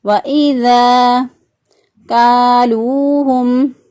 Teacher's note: یہ الف مدہ ہے، الف سے پہلے والے حرف پر زبر، اس کو ایک الف کے برابر لمبا کیا